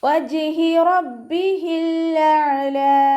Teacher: വജ്ഹി ജിമ് കൽക്കലയുടെ letter ആയതുകൊണ്ട് full സുക്കൂന് കൊടുത്തിട്ട് ഉച്ചരിക്കുക. · ഹംസയായി പോവാതെ ശ്രദ്ധിക്കുക. അക്സൽ ഹൽക്കിൽ നിന്നാണ് ഹ വരുന്നത്. അതിൻ്റെ സൗണ്ടും വ്യക്തമാക്കി കൊടുക്കുക.